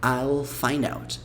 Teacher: Você usa bem o L lá, a língua lá no céu da boca.